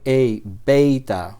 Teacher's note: Esta e larga la vamos a pronunciar como el diptongo e que aparece en la palabra, por ejemplo, reino